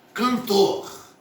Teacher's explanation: Cantor, sílaba tônica, tor, última sílaba. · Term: oxítona